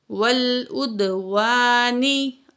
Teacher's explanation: واو الف زبر وا، نون زیر نی، ول اد وانی، الف مد ہے، الف سے پہلے زبر ہے تو 2 کاؤنٹ کھینچ کے پڑھیں گے. نون کے نیچے زیر ہے، وقف کریں گے، نون کی زیر ڈراپ ہو جائے گی، نون کو ساکن پڑھا جائے گا.